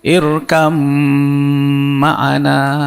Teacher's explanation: Jadi ba-nya nggak bunyi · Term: idgham mutajanisain